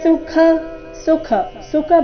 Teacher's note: ಖ ಇಲ್ಲಿ ಮಹಾಪ್ರಾಣ ರಸ್ವ ಬರಬೇಕು